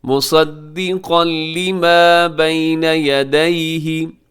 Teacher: مصدقا پہ تنوین کے بعد لام حرف یرملون میں ادغام ہے غنے کے بغیر۔ مصدقا لما بین یدیہ، اسے یدیہ نہیں پڑھنا آپ نے، بین یدیہ۔